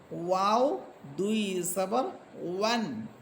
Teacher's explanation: ওয়াও হরফ দুই ঠোঁট গোল করার পর দুই ঠোঁটের মাঝখান থেকে যে মাঝে যে শূন্য জায়গা থাকবে, সেখান থেকে যে আওয়াজটা বের হবে সেটাই হচ্ছে ওয়াও।